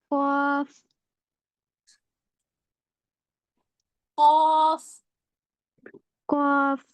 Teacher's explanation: حروف نہیں کی نہیں ہوگا نا. آپ کا جو آپ کی زبان کی جڑ ہے اوپر جائے گی پوری طرح سے نرم تالو کے پاس